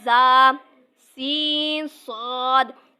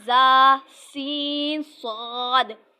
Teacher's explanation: ان کو ادا کرتے ہوئے سیٹی کی طرح تیز آواز نکلتی ہے، اس لیے ان حروف کو حروف صفیریہ یعنی سیٹی والے حروف کہتے ہیں۔